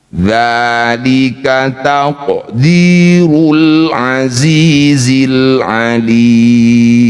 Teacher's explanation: Qaf sukun di tengah bacaan disebut qalqalah sugro. Qalqalah memantul